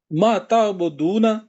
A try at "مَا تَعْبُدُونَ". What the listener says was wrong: ماں کو تھوڑا لمبا کیجئے، ما تعبدون۔